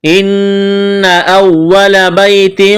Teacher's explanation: ان نون مشدد پر غنہ کریں گے، آواز ناک میں چھپائیں گے